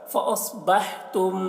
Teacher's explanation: میم ساکن کے بعد با ہے تو اخفاء شفوی ہو رہا ہے میم میں